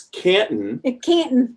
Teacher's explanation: But they say C-A-N-T-O-N. We almost don't pronounce the T.